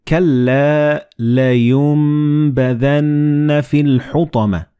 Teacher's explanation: And this meme appears in the middle of the word. So the noon and ba, when they follow one another in the same word, you don't pronounce noon, but you pronounce meme.